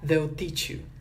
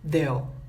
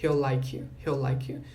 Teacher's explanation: Então o will, ele se reduz a o.